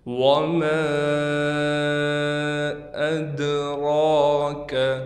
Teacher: وَمَا أَدْرَاكَ، میم کے بعد الف ہے، الف پر مد بھی ہے، لہٰذا میم کو 3 الف کی مقدار بھی کھینچیں گے۔ دال پر قلقلہ کیا جائے گا، را پر کڑا زبر ہونے کی وجہ سے را کو 1 الف کی مقدار کھینچیں گے۔